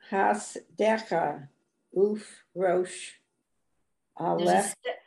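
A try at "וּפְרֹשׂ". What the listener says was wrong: It's Ufros. It ends with a sin, not a shin.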